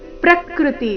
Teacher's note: ಪ್ರ ಮೇಲೆ ಆಘಾತ ಕೊಡೋ ಅವಶ್ಯಕತೆ ಇಲ್ಲ